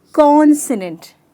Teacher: मैंने जोर कॉन पे दिया।